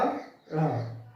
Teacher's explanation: तो जब हम इनको बोलेंगे तो जीभ अंदर को मुड़ेगी और फिर झटके के साथ बाहर आएगी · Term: उक्षत्व व्यंजन